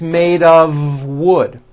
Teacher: it's not a f wood with an unvoiced F it's all voiced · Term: of exception